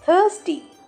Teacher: in this word the sound of th is unvoiced